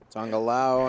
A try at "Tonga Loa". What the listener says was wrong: You say Tonga Lawa like it's a different enunciation. Is that I've always pronounced it Tonga Loa. You have some, is that a Russian way of saying a Tongan name?